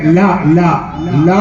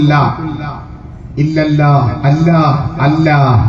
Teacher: അള്ളാ എന്ന് പറയുമ്പോൾ ഈ നാവ് പല്ലിന്റെ മുകളിൽ തൊടാൻ പാടില്ല നമ്മുടെ മുൻ പല്ലിന്റെ മേലെ